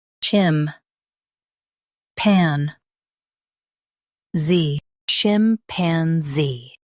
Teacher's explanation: Stress zee and keep chim soft.